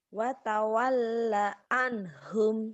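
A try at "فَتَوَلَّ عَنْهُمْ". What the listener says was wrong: Emang itu huruf fa, waw ya, bukan fa. Fatawal, fatawalla anhum.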